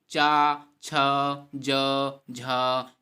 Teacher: इसका उच्चारण स्थान तालु है और यह इसका वर्ग पूछे तो तालव्य है। तो तालव्य तालु से हम चा, छ, ज, झ या बोलते हैं। और यह अघोष अल्पप्राण महाप्राण नासिक के व्यंजन हैं।